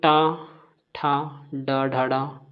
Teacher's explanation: मूर्धन की बात करें तो ट ठ ड ड ड ये हमारे मूर्धन होते हैं